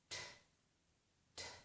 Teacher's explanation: we completely stop the air and then release it in a burst